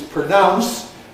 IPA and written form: prəˈnaʊns (pronounce)